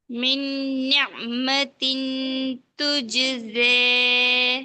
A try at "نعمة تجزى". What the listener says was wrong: இல்லை, அந்த ஜ வரல. சும்மா சொல்லுங்க. ஜ. ஜ ஊண்டி சொல்லுங்க. நல்ல அழுத்தம் கொடுத்து சொல்லுங்க. ஜ. நிஅமத்தின் துஜ்ஸ.